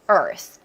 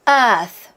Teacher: 왜냐하면 영국 발음은 앞에 있는 3자의 소리를 잘 내고 뒤에 있는 R 사운드를 좀 안 내는 편이고 미국 발음은 앞에 있는 3자를 죽이고 뒤에는 R 사운드를 잘 내는 편이에요. 그러다 보니까 미국식 발음을 할 때는 앞에 있는 3자를 안 내서 그냥 R만 소리 내다 보니까 입안에 공간이 없어요.